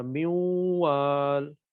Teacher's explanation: من وال تھا، تو یہ کیا ہو گیا کہ نون ساکن آیا، آگے واو، یرملون میں سے واو آ گیا، تو واو پر شد لگائی، یہ نون واو میں ایسا گم ہوا کہ بظاہر پڑھنے میں نہیں آ رہا، میوال بظاہر، لیکن ایک اعتبار سے پڑھنے میں آئے گا بھی، اور کہیں پر نہیں بھی پڑھنے آئے گا۔ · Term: ادغام